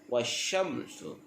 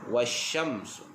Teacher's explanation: Huruf shin ini bersifat dengan tafashi, artinya berhamburan udara. Wasyamsu. Dan sin pula bacaannya sofir, berdesir.